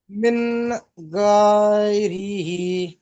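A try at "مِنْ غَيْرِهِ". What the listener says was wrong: মিনটা গুণা কেন করছেন, মিন পড়েন। মিন গায়রিহি।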